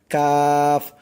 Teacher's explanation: জিহ্বার গোড়া হইতে একটু আগে বাড়াইয়া তার বরাবর উপরে তালুর সঙ্গে লাগাইয়া উচ্চারিত হয় কাফ।